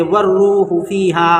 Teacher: الف اور لام کو، یہ دونوں کو نہیں پڑھیں گے، بلکہ بعد والے حرف سے والروح فیہا، بعد والے حرف سے ملا کر پڑھیں گے۔